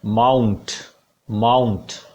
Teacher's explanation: MOUNT is the 9th word, it will be pronounced as माउंट, आउ diphthong चलेगा यहाँ पे, माउंट, माउंट। तो आ और ऊ, ये 2 साउंड मिक्स्ड हैं यहाँ पे, आ से ऊ की तरफ।